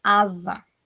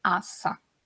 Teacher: Se eu tenho um S entre duas vogais, esse S vai ter som de Z, tá? É por isso que eu falo asa.